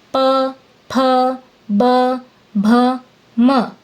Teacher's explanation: इनको बोलते समय दोनों होठ आपस में मिलते हैं। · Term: प वर्ग